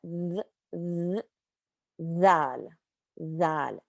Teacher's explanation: It's a little buzzy, a little vibration. Your tongue is sticking out a little bit.